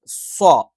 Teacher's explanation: പറയുയാണ് വ ചുണ്ട് വൃത്താകൃതിയിൽ വെക്കണം വഅസർ ഐൻ തൊണ്ടയുടെ മധ്യഭാഗത്തുനിന്ന് വരണം സ്വ നാവിൻറെ കൂർത്ത അറ്റം രണ്ടു വരി മുൻപല്ലുകൾക്കിടയിൽ വേണം അത് മാത്രം പോരാ സ്വ ആയതുകൊണ്ട്തന്നെ അതിൻറെ മധ്യഭാഗം മുകളിലേക്ക് ഉയരണം ഇനി ഇവിടെ